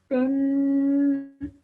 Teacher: The kasra ten underneath, you have to produce an extended nasal sound.